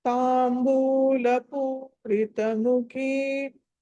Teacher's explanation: ఖా అన్నది మహాప్రాణం ఒత్తి పలకాలి